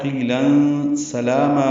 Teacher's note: قیلا میں قوف پر ہے, موٹا پڑیں گے. یا مدہ ہے, تنوین کے بعد سین آنے کی وجہ سے اخفا ہے. قیلا سلاما میں سین صفیر کی آواز سے جلدی ادا کریں گے, لام پر کھڑا زبر باریک پڑیں گے اور دو حرکات لمبا کریں گے.